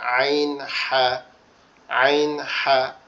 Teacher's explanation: এরপরে আইন, যেটা আইনটাও কিন্তু আমাদের এই কণ্ঠনালী থেকে উচ্চারিত হবে, কিন্তু এটা একটু কি হবে, একটু গলা চাপা আওয়াজ হবে